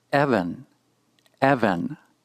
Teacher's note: notice the accent is on the first syllable signaled by the raised Chevron